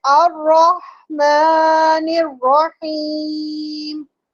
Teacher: جب میں کھینچ رہی ہوں میری آواز میں لہر نہیں ہے